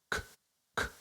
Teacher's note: the K sound, it's a plosive sound, so it means that it cuts the flow